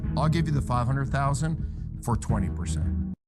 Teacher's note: stresses 2 different numbers, but notice how much lower he goes on 20% than he does on 500,000.